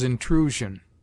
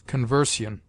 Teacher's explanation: It sounds like z before ion if a vowel goes before it, as intrusion, and like s if it follows a consonant, as conversion.